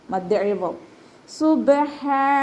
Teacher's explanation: ഹ ഫതഹ തൻവീനിൽ നിർത്തുമ്പോൾ 2 കൗണ്ട് നീട്ടി നിർത്തുക.